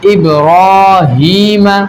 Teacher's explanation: را کے اوپر کیا کھڑا زبر ہو تو را کو پر پڑھیں گے